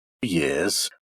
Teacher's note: It's a rise, or rather a low rise.